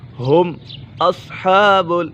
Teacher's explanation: ہم اصحاب، یہاں پر اظہار شفوی کا قاعدہ لگ رہا ہے کیونکہ میم ساکن کے بعد حرف با اور میم کے علاوہ کوئی بھی حرف آ جائے تو میم ساکن میں اظہار شفوی ہوگا، یعنی غنہ نہیں کریں گے۔